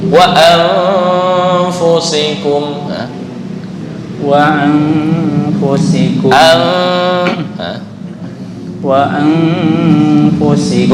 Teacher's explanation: Kan seimbang antara dengung dan samar, antara yang disebut dengan ikhfa ausat. Wa anfusikum, seolah-olah nun langsung mau masuk ke fa.